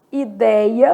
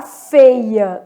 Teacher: Aberto, som de acento agudo, vou colocar lá, por exemplo, ideia, perdeu o acento, mas o som é aberto.